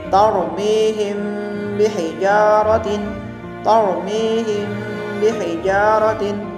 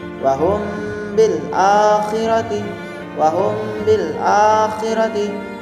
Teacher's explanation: ikhfa syafawi adalah setiap ada mim sukun bertemu dengan huruf ba. Cara membaca mim sukunnya harus samar-samar.